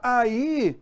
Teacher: eu tenho duas sílabas aí, ó. Eu tenho um hiato.